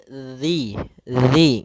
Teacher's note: Pada lafal zi, hati-hati jangan sampai terbaca dengan zi, karena di sini huruf zal. Yang mana untuk huruf zal sendiri makhrajnya adalah ujung lidah kita menempel dengan gigi seri atas, sehingga atau bisa kita gigit sedikit zi gitu ya.